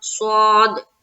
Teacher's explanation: تو یہاں پر دیکھیں او، یہاں پر ہم کریں گے واؤلین کا قاعدہ، او کصیبم، کاف کو ہم باریک نکالیں گے، صاد کو منہ بھر کر بولیں گے۔ صاد جو ہے موٹے حرف میں سے ایک ہے تو اس کو ہمیں منہ بھر کر بولنا ہے۔